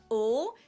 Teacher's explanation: Now in English there are two different L sounds, a dark L that is pronounced more in the back of your throat